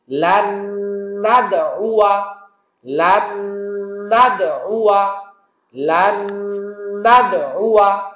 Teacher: নুন সাকিনের পর নুন, ওয়াজিব গুন্নার মতো গুন্না করব, নুন সাকিন সাইলেন্ট হবে, নুন দাল জবর নাদ, কলকলা, আইন পেশ উ, ওয়াও জবর ওয়া, উয়া।